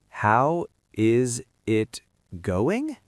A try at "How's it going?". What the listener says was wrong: No, that is too slow. That is too clear. Native speakers connect the sounds. We smash the words together. We don't say each word separately. We say, how's it? Yes, like the letter Z. How's it? Now the second part. We often stop the G sound at the end. We don't say going. We say goin'. How's it going?